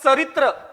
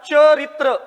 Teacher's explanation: म्हणजे इथं चरित्र अपेक्षित नाही, चरित्र अपेक्षित आहे. म्हणजे इथं च चा उच्चार य युक्त होतो म्हणून हा तालव्य आहे